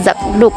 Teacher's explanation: digabung sehingga menjadi Zak duek atau sapu tangan diucapkan Zak duuk bunyi k pada Zak berubah menjadi G velar bersuara karena dipengaruhi oleh bunyi D yang mengikut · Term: asimilasi regresif